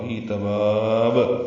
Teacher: تباب میں با کو لمبا کریں گے اور با ساکن پہ قلقلہ ہوگا